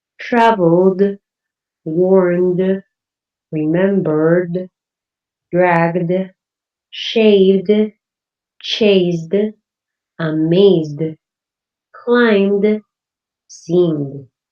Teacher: voiced consonants because they do use your vocal cords, so you have a vibration on your throat, you can touch your throat and feel it.